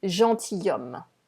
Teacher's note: It is not gentilhomme. Okay, so you don't say the S in the middle, and obviously you don't say the L in the middle either